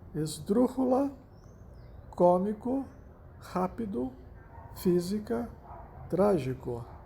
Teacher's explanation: a sílaba tônica recai na antepenúltima sílaba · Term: esdrúxulas